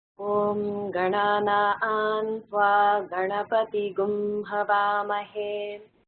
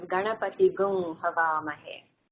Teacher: that's anuswara, but it's changing to this unique gum sound · that's really Ganapatim, but because it's followed by a ha in the Havamahe, it becomes Ganapati Gum Havamahe. So that's why you hear that gum sound in the Vedas.